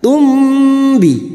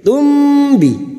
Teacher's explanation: Namanya bacaan ikhfa syafawi, artinya samar di bibir. Tumbi. Mim sukun mendengung hanya bertemu dengan 2 huruf, yaitu huruf ba dan huruf mim.